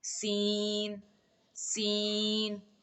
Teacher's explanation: زال کی طرح سین کو بھی تھوڑی سی سیٹی کی آواز نکالیں گے تو سین ادا ہوگا